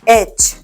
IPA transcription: etʃ